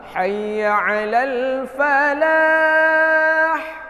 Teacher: ha yang agak pedas, dia keluar dari tenggorokan tengah